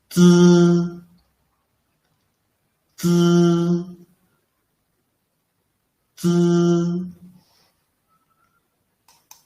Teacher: it is produced by initially pressing the tip of the tongue against the back of the upper teeth. Then quickly moving the tongue tip backward to leave a channel and let the air squeeze out.